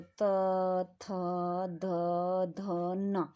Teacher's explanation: Next हमारे आते हैं तवर्ग। तवर्ग जो है जब हम इनको बोलते हैं तो हवा का जो दबाव होता है कहां पे पड़ रहा है? हवा कहां रुक रही है? दांत के पास।